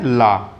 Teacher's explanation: पार्श्विक व्यंजन में इसके उच्चारण में वायु जीभ के पास से निकलती है, उसे ही हम पार्श्विक व्यंजन कहते हैं।